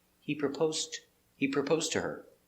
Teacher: when you say it together you don't hear the past